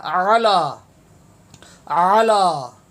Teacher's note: عین زبر آ، یہ بھی حلق سے نکلتا ہے، عین زبر آ